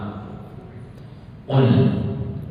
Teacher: itu pangkal lidah dengan langit-langit lunak